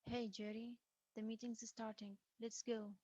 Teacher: again it's a first name basis but this sounds more commanding it's mostly falling intonation like a statement i expect a response and i need one now · It's mostly fallen intonation like a statement. I expect a response and I need one now. Perhaps Jerry and I are equal, or could also be that I'm little higher in a position compared to Jerry.